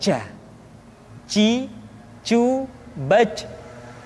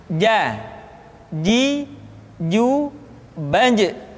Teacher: Cu BAC Padahal kalau kita melihat sifat yang dimiliki huruf ja dia tidak boleh mengalir nafas karena sifatnya aljahr